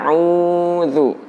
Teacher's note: dalam mengucapkan huruf Ain itu kita keluarkan dari tenggorokan bukan dari mulut